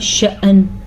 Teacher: اسی طرح یوم ہوا فی شأن، شأن اس کو ادا کرنے کا طریقہ سیکھے کیونکہ وقت کی وجہ سے نون بھی ساکن ہو گیا، حمزہ کے اوپر ساکن ہے تو ہلکا سا جھٹکا ہوگا